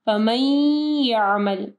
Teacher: हम लोग मीम को जो है या के साथ मिलाएंगे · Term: इदगाम